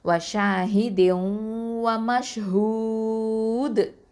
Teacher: மத்தல் ஆரிதில் சுக்கூன் அந்த சட்டத்தின் அடிப்படையிலையும் 4 இல்லைன்னா 6 அலிஃப் நீட்டி நிப்பாட்டணும்